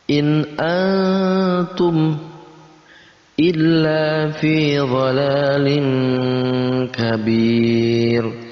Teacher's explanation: In antum, ya, ada nun mati bertemu dengan ta, itu juga sama ikhfa. Kita samarkan, hukum bacanya disamarkan, maka ditambah dengan huruf eng.